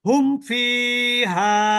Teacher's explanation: ওই মিম সাকিনকে স্পষ্ট করে ওখানে দেরি করা যাবে না দেরি করলে কিন্তু গুন্না হয়ে যাবে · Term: ইজহার